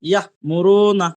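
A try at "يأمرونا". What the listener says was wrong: বাস মাশাআল্লাহ, ইয়া মুরুনাটা আপনি বানান করেন,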